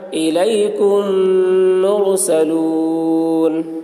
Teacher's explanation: میم ساکن کے بعد میم آ رہا ہے اس لیے میم کو میم کے ساتھ ملا کر غنہ کے ساتھ پڑھیں گے، اس کو ادغام شفوی کہتے ہیں۔